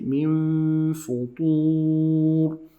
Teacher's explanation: We hide the noon into the fa and we add the ghunna